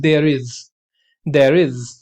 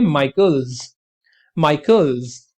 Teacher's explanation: तो इस तरीके से अगर आप वर्ड के एंड में एस लगा रहे हैं, चाहे वो एपोस्ट्रोफी वाला हो या फिर आप उसको प्लूरल बनाने के लिए एस लगा रहे हैं, तो आपका एस जो है वो जेड की साउंड देगा